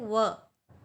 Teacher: दंत प्लस ओष्ठ, दंतोष्ठ, दंतोष्ठ, ये है व